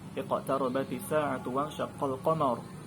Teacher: Nah, qamar maka itu dibaca tebal. Iqtara itu ra-nya dibaca dengan tebal. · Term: ra tafkhim